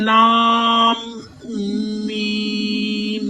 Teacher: अलिफ लाम पे मद है, लंबा करना है, लाम मीम। मीम को भी लंबा करें, मद है